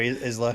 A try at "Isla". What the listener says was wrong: It's a silent S. The Scots love to put in random letters in names.